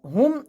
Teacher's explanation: মিম সেকেন্ডকে গুন্না ছাড়া স্পষ্ট করে পড়তে হবে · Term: ইজহারে শাফবির